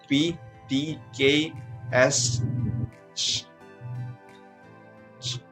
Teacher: You will feel no vibration on your throat. Just a short explosion of air as you pronounce each of these consonant sounds and feel no vibration in your throat. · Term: Voiceless consonant